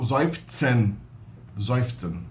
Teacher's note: Então a gente tem a mania de pronunciar o S como S, não, o S é pronunciado como Z em alemão. E o Z é pronunciado como TS.